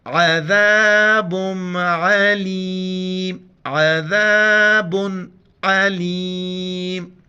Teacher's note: عین کو گلے سے کرنا ہے اور ذال کے وقت زبان باہر نکالنا ہے